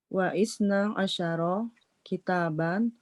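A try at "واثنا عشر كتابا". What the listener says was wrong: Nah, wasna Bu ya bacanya. Jadi bukan wa isna, tapi wasna. Karena dia termasuk hamzatul wasl. Wasna asyara kitaban. Gitu. Cara bacanya harus disambung.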